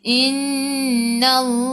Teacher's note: Nun ada sabdu wajib al-gunnah, kena dengung 2 harakat.